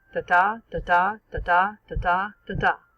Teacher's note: The tales are written in regularly rhyming couplets of what would later be called iambic pentameter, 5-stressed, 10-syllable lines, alternating unstressed and stressed syllables. It sounds something like this: da-da, da-da, da-da, da-da, da-da.